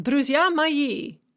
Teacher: We have unstressed syllable, stressed syllable, unstressed syllable, stressed syllable. In other words, the stresses will fall on the even syllables. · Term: iambic